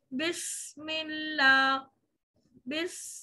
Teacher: सीन की आवाज में सफीरिया जो इसकी सिफत है एक बारीक सी आवाज बरकरार रहेगी